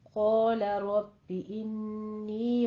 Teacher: तशदीद नबर भी करना है और फिर कसरा की आवाज़ को बारीक करना है। इन्नी पे गुन्ने वाजिबा और या मद्दा अदा करनी है।